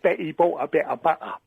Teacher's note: that is a glottal stop, where they miss out the T and everything